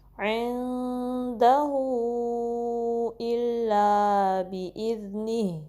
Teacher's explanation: عندہ، ہو کو 3 سے 4 count stretch کریں گے، پھر حمزہ کو آگے ہم شارپلی پڑھیں گے، کلیئرلی پڑھیں گے، گہرے حلق کے حصے سے، deep part of the throat سے